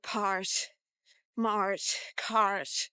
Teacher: sound like R and T together. very typical Irish thing